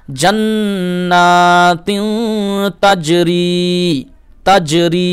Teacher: এই তিনে গুণনা করবেন, কারণ তানভিনের পরে তা ইকফার হরফ এসছে